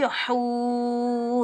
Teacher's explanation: इस हा को हलक के दरमियान से अदा करेंगे। हा के ऊपर पेश, आगे वाव साकिन है, हा को हम वाव साकिन के साथ मिलाएंगे, एक अलिफ की मिकदार खींच कर अदा करेंगे।